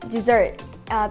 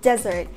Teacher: dessert is pronounced dɪˈzɜːrt, the stress is on the second syllable. Meanwhile, desert is pronounced ˈdezərt, the stress is on the first syllable.